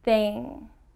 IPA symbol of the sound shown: ŋ